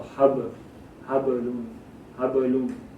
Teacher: this bay has a sukoon on top of it, so you give it a little echo sound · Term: harufi kalkula